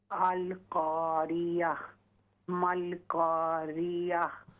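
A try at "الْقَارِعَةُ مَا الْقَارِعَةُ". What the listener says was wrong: आइन को दुरुस्त करें। अल क़ारिअह मल क़ारिअह।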